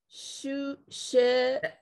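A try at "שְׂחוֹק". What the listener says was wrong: Look where that dot is. Yeah, the dot, because there's no vowel or anything, is only to make it a sin instead of a shin. No vowel. So it's sehok.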